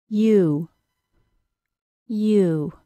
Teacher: essentially the long u sound which sounds like U is a y sound plus an oo sound · made into a small tight Circle the sound is ooh ooh the long u is a two sound vowel it begins like a y sound with relaxed lips and the tip of the tongue very high to the tooth